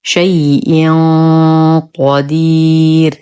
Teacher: تنوين بعده حرف القاف، الحكم إخفاء حقيقي مع غنة كاملة مفخمة